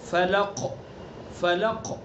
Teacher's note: قاف کے اندر قلقلہ بھی ہوگا، اور قلقلہ کہتے ہیں کہ آواز کو پیچھے لوٹائیں گے